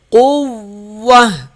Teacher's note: قاف موٹا ہوگا، واو سخت پڑھا جائے گا، تا پہ جب وقف کریں گے تو اسے ہا پڑھیں گے۔